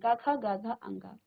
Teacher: इसकी जो ध्वनि है वो आपके कंठ से निकल रही है। आपके कंठ से आवाज आ रही है। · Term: क वर्ग